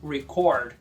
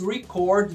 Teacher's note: Já o verbo é igual, mas pronuncia record. Significa registrar ou gravar, tônica na segunda